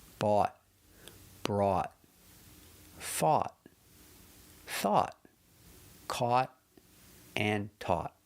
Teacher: They all have the same vowel pronunciation. Aw, and they all end with a stop T. But, remember if there's a vowel after any of these words, change the T to a D, a fast D.